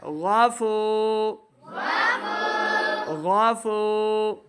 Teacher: فا واو پیش فو, اس کو دو حرکات لمع کرنا ہے کیونکہ واو ساکن سے پہلے پیش ہے, تو پیش ہو تو واو مدہ ہوتا ہے, ہم نے اس کو دو حرکات لمع کرنا ہے.